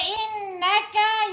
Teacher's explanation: Wajibul gunnah, nun dengung 2 harakat